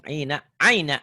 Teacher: Kalau patah dengan ya mati nggak jadi panjang.